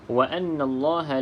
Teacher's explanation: Nun ada tanda sukun, tanda sabdu sama seperti mim yang bersabdu, maka kita baca dengung 2 harakat. Di sini ada hukumnya wajibul gunnah.